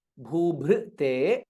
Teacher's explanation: again both bhas are mahaprana